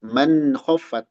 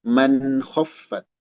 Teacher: Kemudian man khaffat, izhar halki, nun menghadapi kho dibaca jelas